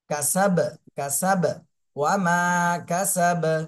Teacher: বা যেহেতু কলকলার হরফ, আর সাকিন আসলে এখানে কলকলা হয়ে যাবে।